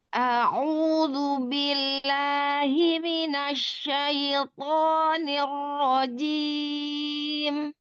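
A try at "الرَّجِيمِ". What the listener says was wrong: Jim, jangan ditekan. jangan ditekan jinnya. Rojim. Ke depan aja.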